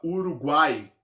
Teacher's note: eu tenho aí a vogal A no meio de 2 semivogais, o U e o I. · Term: tritongo